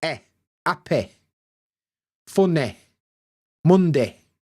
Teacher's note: we basically clip the end of the Y sound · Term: y clipping